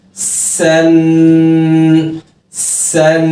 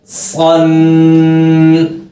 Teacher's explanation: اگلا حرف موٹا ہے سیٹی والا صن. سین اور صاد کی ادائیگی میں خصوصی خیال رکھا کریں کہ صاد کی آواز باریک نہ ہو جائے ورنہ سین کی آواز لگے گی، اور سین کی آواز موٹی نہ ہو جائے ورنہ ایسا لگے گا جیسے آپ صاد ادا کر رہے ہیں.